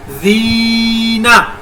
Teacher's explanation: یا مدہ کو ایک الف کے برابر لمبا کر کے پڑھا